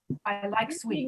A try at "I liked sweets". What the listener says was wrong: More T like sweets. It's not the same sound like I liked it.